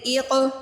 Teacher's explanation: حمزہ قاف زیر ایق، یہاں پہ قلقلہ بھی ہونا ہے، قاف کو ہلا کے پڑھنا ہے